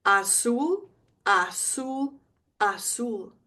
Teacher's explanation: Remember the Z is an S sound.